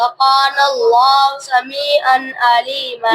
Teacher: تنوین کے بعد حروف ہلکی میں سے عین آ رہی ہے تو غنہ نہیں کریں گے. · اللہ کے لام سے پہلے زبر ہے لام کو موٹا پڑھیں گے.